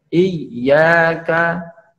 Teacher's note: Ketika huruf ya itu tasydid. Ya, iyyaka, contoh huruf iyyaka ya, tengah lidah ditempelkan ke langit-langit.